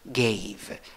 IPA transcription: ˈgāv